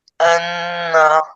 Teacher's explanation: পরিমাণ পড়তে যত সময় লাগে অতটুকু গুণ করে ধরতে হবে হ্যাঁ নাকের ভিতরে গুন্নাটা নাক থেকে উচ্চারিত হয়